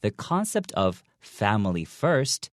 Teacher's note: in quotations and when I read it I actually make that I make the intonation go upwards